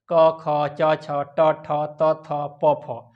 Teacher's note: इसमें स्वर तंत्रिया झंकृत नहीं होती है और इसमें श्वास का ज़्यादा प्रयोग होता है। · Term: अघोष वर्ण